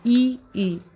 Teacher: तालव्य स्वर जो तालु से बोले जाते हैं।